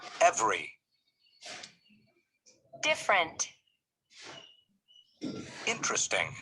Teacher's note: notice that the unstressed vowels are not pronounced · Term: silent syllables